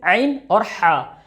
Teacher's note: ये 2 लेटर 2 हरफ जो हैं ये आपको बीच हलक से निकलेंगे